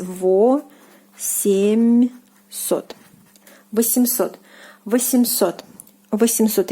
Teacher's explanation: the soft sign, it doesn't soften the M consonant when you are pronouncing this word